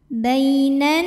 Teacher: Nun bertasdid cara bacanya dengung tahan dengungannya kurang lebih dua harakat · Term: gunah musyaddadah